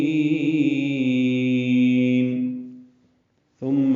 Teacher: ثم مثا کو نرمی سے ادا کریں گے اور میم مشدد غنہ ہوگا، آواز ناک کے بانسے میں لے جائیں گے، 2 حرکات تک ٹھہرائیں گے